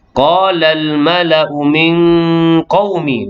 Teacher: Nun mati bertemu dengan qaf. Ikhfa hakiki dengan 2 harakat. Inna wajibul gunnah, wajib dengan 2 harakat.